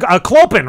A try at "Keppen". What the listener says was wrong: Keppen. The O is silent. It's weird Dutch.